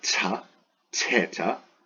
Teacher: Theta, it's like tau, but with an aspirate, so ta, theta.